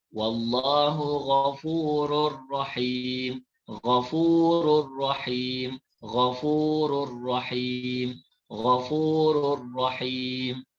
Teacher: Cara bacaannya iaitu kita masukkan bunyi tanwin ke dalam ra. Asalnya ghafurun, ghafurun. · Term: idgham bila gunnah